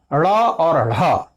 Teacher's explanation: उत्क्षिप्त का तात्पर्य होता है फेंका हुआ। इनके उच्चारण में जिह्वा मूर्धा को छूकर एक झटके से सरकते हुए नीचे की ओर आती है, इसलिए उन्हें उत्क्षिप्त व्यंजन वर्ण कहा जाता है।